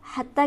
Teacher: لکا حتی، لکا کو جلدی پڑھیں گے. حتی کے تا پر ہمارے پاس کھڑی حرکت موجود ہے، اسے ہم کھینچیں گے ایک الف کے برابر